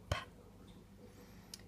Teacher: Bilabial. This is a sound made with two lips. An example of this is p.